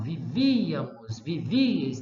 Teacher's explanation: O acento estava aqui. Então, o acento não é mais no A. Ele é no I, na desinência da conjugação. Então, houve um recuo no acento, né, da conjugação.